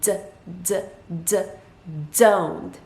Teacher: it's almost like there's a combination of the d sound and the z sound but it's a very very slight combination so it's not a vivid z it's just it's very quick